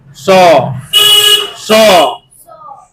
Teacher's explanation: कहा जाता है ना ताल स इसलिए कहा जाता है क्योंकि इसका उच्चारण किससे करना है हमको तालू से करना है तालू प जी ले जा कर के त स को बोलना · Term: तालव्य स